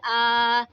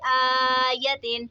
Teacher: کھڑا زبر اس کو ہمیشہ کھینچ کر پڑھا جاتا ہے